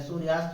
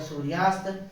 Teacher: इसी प्रकार से इसमें जो अगला है वो है सूर्य धन अस्त, इसका सूर्य का आ और ये अस्त का आ दोनों मिलकर के यहाँ बड़ा आ हो गया, तो ये हो गया सूर्यास्त।